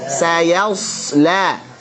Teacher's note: Shadnya alirkan. Mengalir tebal dan tajam.